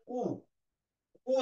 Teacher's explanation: উ, ও যখন তুমি বলছো, দেখো তুমি ঠোঁট দুটো একদম কাছাকাছি, ঠোঁটগুলো মানে এই জায়গাটা সংকুচিত হয়ে যায়।